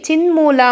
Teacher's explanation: ಮೂಗಿಂದ ಹೇಳುವಂತದ್ದನ್ನ ನಾವು ಅನುನಾಸಿಕ ಸಂಧಿ ಅಂತ ಕರೀತೀವಿ